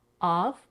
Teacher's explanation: we voice the consonant F to V